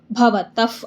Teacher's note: ತ ದ ಮುಂದೆ ವಿಸರ್ಗ ಇದೆ ವಿಸರ್ಗದ ಮುಂದೆ ಪ ಇದೆ ಅದಕ್ಕೆ ಏನಾಗುತ್ತೆ ಅರ್ಧಫ ಆಗುತ್ತೆ